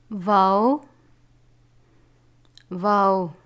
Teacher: دونوں ہونٹوں کو گول کر کے یعنی ناتمام بند کر کے